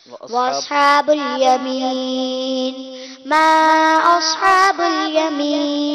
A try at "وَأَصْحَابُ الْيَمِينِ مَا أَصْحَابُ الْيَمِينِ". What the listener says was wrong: sorry وقف نہیں، وصل درست نہیں کیا، وصل درست نہیں کیا، ملانے میں غلطی کی،